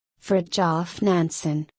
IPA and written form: ˈfrɪd.tjɒf ˈnænsən (Fridtjof Nansen)